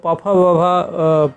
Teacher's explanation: मतलब जिनके उच्चारण में होठ आपस में स्पर्श करें तो पफ प वर्ग वाले वर्णों के उच्चारण में होठ स्पर्श करते हैं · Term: ओट से व्यंजन